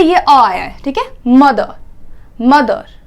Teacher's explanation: ER जो पीछे है ना उसकी जगह पे ये अ आया है, ठीक है, मदर, मदर, तो अर नहीं बोलते हम, मदर, तो इसीलिए यहां पे ये वाला सिंबल आया।